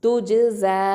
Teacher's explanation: துஜ். ஜ ஃபதா அலிஃப் சகீரா ஜ 2 ஹரக்கத்தை நீட்டணும்